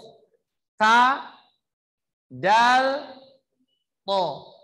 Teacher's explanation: menyentuhkan lidah kita ke gusi, maka akan menghasilkan huruf ta, dal, to.